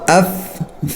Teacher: फा निकालने का तरीका यह है कि ऊपर के दांत नीचे के होठ को लगे ठीक है और ऐसे फा निकाले दोनों होठों से ना निकाले